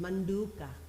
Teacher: Cerebral na, cerebral da, both unaspirated